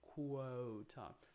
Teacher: the lips are very almost closed very rounded almost almost closed and then we open up